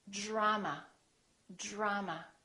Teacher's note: So this DR sort of becomes like the letter J, j, j. Or the phonetic symbol looks like this.